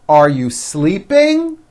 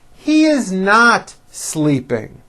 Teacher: notice how my voice goes up at the end of a question like this are you sleeping and notice how my voice comes down at the end of a sentence that is not a question